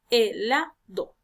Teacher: nos damos cuenta que la sílaba tónica cae en la sílaba la